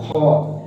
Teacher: खा को हमने हलक के आखिरी हिस्से से निकालना है, खा। और उसके बाद खा जो है ये मोटे रूप में आ जाता है, खा।